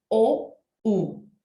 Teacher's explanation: Cuando yo pronuncio la O y la U, no simplemente se retrae los músculos y la boca se forma embudo, sino que también su lengua retrocede con todo hasta el final, se inclina, ya casi chocando al paladar. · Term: vocales tan posteriores